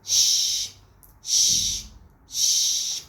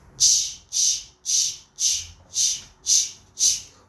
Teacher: Our mouth is wider when we pronounce this sh, but it is closer when we pronounce ch, ch. We don't open the whole mouth when we are saying ch.